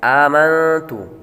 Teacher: آمنت، یہاں پر حمزہ پر کھڑا زبر ہے، اس کو لمبا کریں گے، نون پر غنہ کریں گے، نون ساکن کے بعد تا حروف اخفاء میں سے آ رہا ہے تو غنہ کریں گے۔ باللہ، لفظ اللہ کے لام کو باریک پڑھیں گے کیونکہ لفظ اللہ کے لام سے پہلے حرف کے نیچے زیر ہے۔